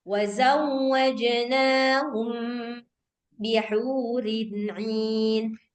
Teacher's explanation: kalau ikhfa syafawi ini mim ketemu ba, suara mimnya itu jelas tapi didengungkan